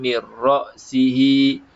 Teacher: Mir ra'sihi, kita tak perlu sebutkan huruf nun ini. Nun ini seolah-olah tiada, dimasukkan ke dalam ra tadi, tidak terzahir dah. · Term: idgham bila gunnah